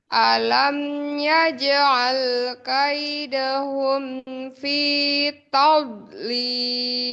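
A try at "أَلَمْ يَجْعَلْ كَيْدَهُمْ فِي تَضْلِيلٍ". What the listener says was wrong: Ya, bagus. Terus.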